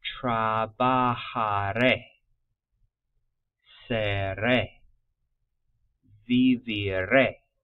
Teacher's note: we kind of cruise and then emphasize that final vowel sound